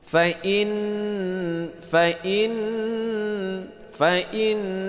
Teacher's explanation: Ghunah ya. Berdengung dua harakat. · Mad thabi'i misron baris dua fathatain bertemu dengan fa ikhfa hakiki